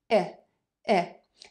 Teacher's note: that short I made with very relaxed lips. It's not an E with tense and very closed lips.